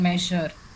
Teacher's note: like in measure it's not s and it's not j but it's somewhere in between So um the effect of that is you know uh when you say the sound there's a soft whispering or a hissing effect in the speech right.